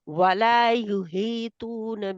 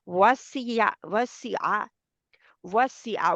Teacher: वा के लिए होंठ गोल होने चाहिए